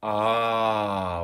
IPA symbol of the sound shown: ɑ